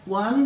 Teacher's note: there's no air after the W, so you know there's no H